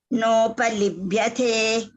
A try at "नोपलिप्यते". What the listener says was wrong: Please, ma'am, you have to correct yourself on this pa and ba, etc. You have to be clear, very clear about it. No. You are still pronouncing not correctly.